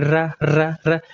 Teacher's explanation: जब आप कहेंगे र कहेंगे तो जीवा लुढ़कती हुई प्रतीत हो रही है। जैसे कहेंगे र तो ऐसा लग रहा है कि जीवा लुढ़क रही है। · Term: लुंठित